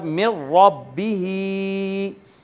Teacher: ہا کے نیچے جو کھڑی زیر ہے اس کو بھی ہم نیچے کی طرف ہی کھینچ رہے ہیں اور اتنا ہی کھینچ رہے ہیں جتنا کہ یا مدہ کو کھینچتے تھے